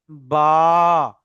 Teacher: দুই ঠোঁটের ভিজা অংশ হতে বা উচ্চারিত হয়। অর্থাৎ দুটো ঠোঁটের বাইরের দিকে দেখেন শুকনো অংশ আছে, একটু ভিতরের দিকে দেখেন রসালো ভিজে জায়গা, ওই ভিজে জায়গা ঠেকিয়ে বলবেন বা, হলো।